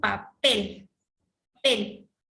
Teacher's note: Ya en la E está la mayor fuerza de voz.